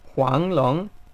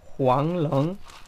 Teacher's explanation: la manera correcta de decir Huanglong es Huanglong, subiendo ambos tonos